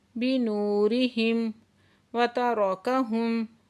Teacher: ذہب اللہ بنورہم، واو ساکن سے پہلے پیش ہے تو واو مدہ ہے، 2 حرکت کھینچ کے پڑھیں گے، اور میم ساکن ہے تو اظہار شفوی ہوگا · را کو پر پڑھیں گے، اور میم ساکن پہ اظہار شفوی ہے